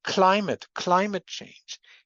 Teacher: the c in climate is also aspirated. So, not only is the L um devoiced, but that's also an example where we have an aspir a forition on the C. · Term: aspiration